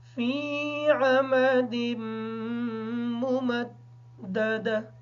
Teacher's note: ممددہ کی جو دو میمیں ہیں ان کو الگ الگ کر کے ادا کریں گے اور دوسری میم کو دال کے ساتھ ملا کے پڑھیں گے کیونکہ دال کے اوپر شد ہے.